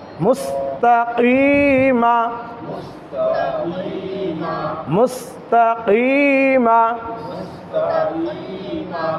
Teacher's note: এই কফ এটি হচ্ছে জিহ্বার গোড়া তার বরাবর উপরে তালুর সঙ্গে লাগিয়ে উচ্চারণ করতে হয়